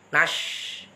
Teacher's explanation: Shinnya tafashi, harus ngowosh, nafasnya banyak. Shin itu tengah lidah, bukan ujung lidah, tetapi tengah lidah. Yang ditekan tengah lidah.